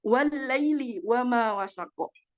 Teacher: Jadi alif lam itu tidak terbaca dan langsung masuk ke dalam harful lam. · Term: alif lam syamsiah